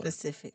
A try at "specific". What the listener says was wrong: I don't think you saying it right. You're saying Pacific like the ocean. That is not it.